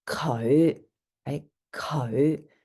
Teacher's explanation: it again is a low Rising fifth tone and it can get really guttural it's co right Co so you're going down and then up · so you're going down and then up again for that low rising